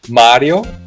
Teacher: in Italian it's Mario with a long ah